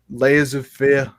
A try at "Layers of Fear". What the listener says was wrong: See, it sounds like you say laser fear.